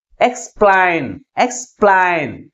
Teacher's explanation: Second syllable is pronounced with a greater force comparing with first syllable. That's why the primary stress is on the second syllable.